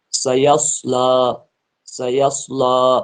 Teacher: سین کو باریک، صاد کو موٹا، آواز الگ الگ نکلنی چاہے